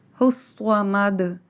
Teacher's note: صاد کی آواز میں سیٹی بھی ہوگی اور اسے پر پڑھا جائے گا